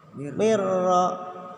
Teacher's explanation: Cukup mirro, jangan mirro. Cukup masuk aja nun matinya ke huruf ro. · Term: Idgham bila guna